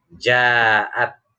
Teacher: Ada mad tabi'i, fathah di depannya alif, di depannya ada hamzah, tetapi dalam satu kata. Ini yang dinamakan mad wajib muttasil, ya, panjangnya 6 harokat. Min ba'di ma ja'at humul bayyinah, alif lamnya jelas, ya.